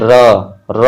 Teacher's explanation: इन व्यंजनों के उच्चारण में जिह्वा को 2-3 बार कंपन करना पड़ता है, वे प्रकंपित कहलाते हैं।